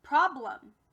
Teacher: It's a schwa because it doesn't sound like its normal short or long E self.